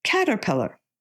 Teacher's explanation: the stress is on the first syllable with the minor stress on the third syllable